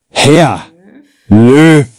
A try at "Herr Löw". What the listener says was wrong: Herr Löw? Wir würden nicht Herr Löw sagen. Ja, es ist ein W, aber wir würden sagen Herr Löw. Also mit einem F im Prinzip.